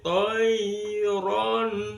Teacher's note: Mimnya dibaca jelas karena di bibir, syafawi itu bibir, jelas di bibir, alaihim toinya lin madlin, kemudian toiron ada fathatain bertemu dengan alif atau hamzah, maka hukum bacaannya adalah bacaan idhar halki, jelas karena bertemu dengan huruf halki kerongkongan. Toiron, jadi sampai bunyi baru masukkan ke a.